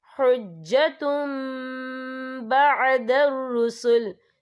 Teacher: یا دیکھیں حجتم، تا کے پر تنوین ہے، تنوین کے بعد جو ہے با آ رہا ہے تو یہاں پر اقلاب ہوگا، یعنی تبدیلی ہوگی، تو ہم یہاں میم کا تلفظ کریں گے اور ہم یہاں غنہ بھی کریں گے